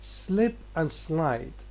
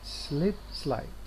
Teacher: Now in the words slip and slide, here, slip and slide, this L, in fact, which is in between consonant and a vowel, is clear